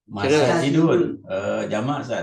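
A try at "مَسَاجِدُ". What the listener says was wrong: Jangan ditanwinkan. nah, jamak taksir tapi karena polanya mafail itu termasuk ismul adil ansori yang tidak bertanwin.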